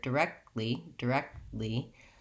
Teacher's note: we don't really release these Ks and Ts. We mark them, lift our tongue for them, and then move right into the L sound · I'm lifting my tongue, stopping the air kind of far back in my mouth, and then moving right to my L with the front tongue. That's where it releases.